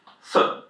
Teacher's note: Whenever you see an i Chinese you pronounce it as uh.